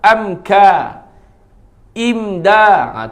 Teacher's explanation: Izhar kena jelas. Jelas sebut. Mim mati bertemu dengan kaf.